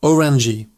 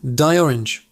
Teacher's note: The G sound is a bit softer, almost like a J sound in English.